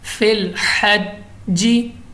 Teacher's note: जमाओं के साथ पढ़े हैं जीम को क्योंकि कलकला है